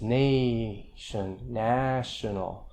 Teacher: Well, these vowel alternations, nation, a long vowel, becomes national when you add a suffix. The stress stays in the same syllable, nay, nah. But the vowel changes, nation, national.